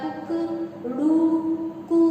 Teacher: कुक जो है वो छोटे ऊ की मात्रा को बताता है, यानी छोटे स्वर को बताता है। ड़ू जो है वो बड़े स्वर को बताता है, और ड़ू, कुकड़ू, कू जो है वो प्लुत को बताता है।